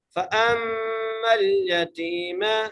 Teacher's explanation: حمزہ کو میم سے ملانا ہے، میم پر غنہ کرنا ہے اور میم کو لام سے ملانا ہے.